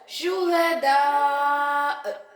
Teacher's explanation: ஹம்சாவுக்கு சுக்குன் வைத்து அதிர்வோட உச்சரிக்கிறோம்